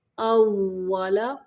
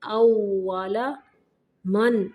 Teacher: ہونٹوں کو گول کر کے وہ کی ادائیگی کرنی ہے،